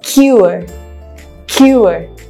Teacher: Ue merupakan penggabungan dari 2 monophthong sounds, yaitu o dan e yang menjadi suara ue yang kita aplikasikan ke dalam kata cure.